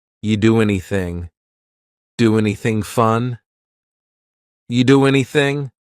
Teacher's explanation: we link together doing because we're going to drop the G it ends with the sound n the n Sound and then the next word anything we sometimes · then the next word anything we sometimes drop the A and we're going to push those two together because there's two n sounds side by side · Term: dropping linkings